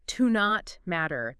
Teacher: Yeah, you might hear it almost like one word, like to not matter. The T in not kind of blends into the M.